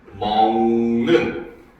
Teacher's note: 뒤에 있는 니은의 영향을 받아서 기역이 이응으로 변화를 해버렸죠. 그렇죠? 얘는 바로 종성인 기역이 이응으로 변해서 소리나는 오직 비음화 한 번만 일어났다.